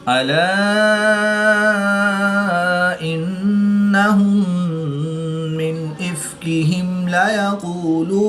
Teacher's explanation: الف مدہ کے بعد حمزہ دوسرے کلمے میں ہے تو یہاں پر مد منفصل ہوگی، 2 سے 3 الف تک کھینچ کر پڑھیں گے۔